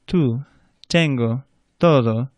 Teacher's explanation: Well, the letter T, when you pronounce the letter T, your tongue should be a little bit further forward by those front upper teeth, and it's a softer sound. You don't blow as much air through the T.